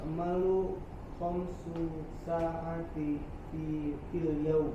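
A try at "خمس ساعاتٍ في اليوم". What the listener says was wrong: Nanti kalau membaca ada tanwin tetap dibaca ya. Jadi jangan di saati gitu, tapi sa'atin fil yaum tetap dibaca agar tidak merubah sifat dari nahwunya gitu ya.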